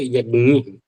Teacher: उच्चारण की सरलता के कारण ज का लोप होता है, जिससे ज्ञ जैसा उच्चारण हो चला है